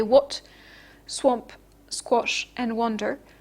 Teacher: the W sound influences the pronunciation of the vowel which is rounded